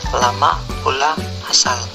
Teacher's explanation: Konsonan L, bunyi apikoalveolar sampingan bersuara